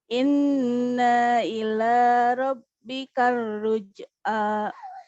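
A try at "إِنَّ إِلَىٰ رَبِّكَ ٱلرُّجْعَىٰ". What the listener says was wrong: Na-nya dibaca pendek. Naila.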